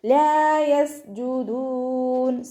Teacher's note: സീന് കൽക്കലയുടെ letter ഇല്ലാത്തത് കൊണ്ട് half സുക്കൂന് കൊടുക്കുക. അവസാനത്തിൽ മദ് ആരിദിൽ നിർത്തുമ്പോൾ 2, 4, 6 ഹർക്കത്ത് വരെ നീട്ടി പാരായണം ചെയ്ത് കൊടുക്കുക കേട്ടോ.